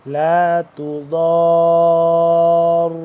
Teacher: تا بریک، ضاد موٹا، را بھی موٹا پر کر کے